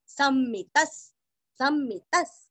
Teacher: स के ऊपर आघात और दो म का उच्चारण भी अच्छे से करना है। विसर्ग का उच्चारण आधा स सम्मितस सम्मितस।